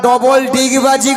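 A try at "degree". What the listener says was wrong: ডবল ডিগবাজি নয় মাসি, বলো ডবল ডিগ্রি আছে। ডিগ্রিকে বলে ডিগবাজি। একটা কথা উচ্চারণ হচ্ছে না।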